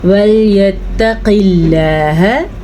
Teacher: اب پیچھے ہم نے اس کو لفظ اللہ کو پر پڑھا تھا کیونکہ پچھلے حرف پہ پیش ہے, لیکن یہاں پہ لفظ اللہ سے پچھلے حرف نیچے زیر ہے, تو ہم لفظ اللہ کو باریک پڑھیں گے